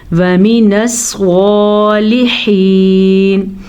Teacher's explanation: سواد کو پر پڑھ لیجئے گا کیونکہ سواد بھی حروف مستعلیہ میں شامل ہے. ہا کے تلفظ کا دھیان رکھنا.